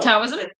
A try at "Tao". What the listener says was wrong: Taoism is pronounced with a D, though. It's like Tao.